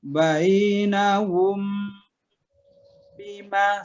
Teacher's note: Jadi bacaan huruf bibirnya atau mimnya kita sembunyikan ke dalam ba, ya, atau kita sengaukan. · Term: ikhfa safawi